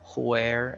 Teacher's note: you blow the air it's like inverting the H and the W